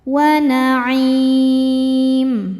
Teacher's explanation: Maka ketika berhenti ainnya ini panjang, boleh 2 atau 4 atau 6 harokat asal konsisten dalam sekali baca. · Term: mad arid li sukun, mad arid lukun